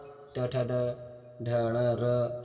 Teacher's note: मुर्धा में ट ठ ड ढ ण र श आएगा